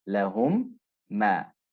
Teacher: the first meme is blended into the second meme and they merge into one letter that carries a shadda. Right? The ghunna must be observed for 2 counts while the lips remain closed. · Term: Idgham shafawi